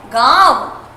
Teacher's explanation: आपका हल्का सा टच आपके गले के साथ साथ आपके नाक को भी निकलता है और यही कहलाता है आपका अनुनासिक।